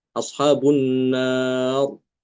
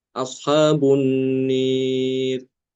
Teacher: Kalau yang Imam Ad-Duri karena dia membaca imalah, maka rohnya dibaca tipis.